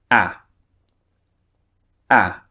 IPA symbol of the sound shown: æ